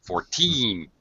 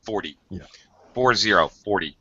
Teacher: Make sure you're emphasize the teen gets the stress when you're talking about numbers, ages, whatever, money, whatever. Make sure you stress the een so you can tell the difference, because the T in 40 is very fast.